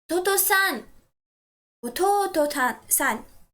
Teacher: you are going to stress the syllable to